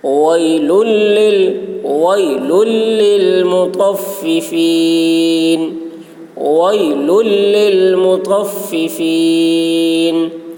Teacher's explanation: تو کی آواز موٹی ہوگی اور تو کو فا کے ساتھ سختی کے ساتھ ملائیں گے